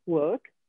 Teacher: mi raccomando non pronunciate la R, la dovete pensare, work. Il suo passato si forma aggiungendo una E e una D e si pronuncia worked.